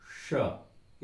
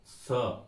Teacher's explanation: श ये हुआ तालू स ये हुआ दांत श ये और पीछे तालू के पीछे भी मोर्ता सबसे पहले